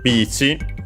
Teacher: So simply beach like in English. Should be accented, yes, like in English on the first syllable.